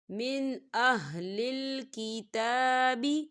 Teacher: تا کے اوپر کھڑی حرکات ہے تو اسے دو حرکت کے برابر کھینچ کے پڑھا جائے گا